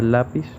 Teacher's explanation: Y como puede demostrar la tilde en la palabra lápiz, el acento fonético recae en la sílaba la